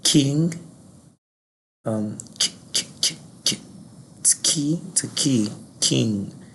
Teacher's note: the English realization of key is actually the palatal plosive key, king